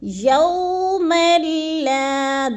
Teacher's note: جیسے یوم لا، اب میم کو لام کے ساتھ ملانا ہے تو ادھر ادغام بلا غنہ ہو رہا ہے، یعنی ادغام مع الغنہ نہیں ہے، یعنی غنہ نہیں کرنا۔